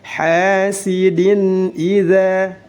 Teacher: za mad tabi'i dibaca 2 harakat. Hasad pendek dan dipantulkan.